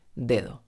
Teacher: la segunda está entre vocales y por eso se pronuncia flojita